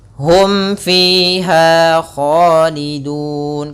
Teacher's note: ada fathah bertemu alif, maka dia kita namakan juga dengan mad tabi'i. Panjangnya adalah 2 harokat.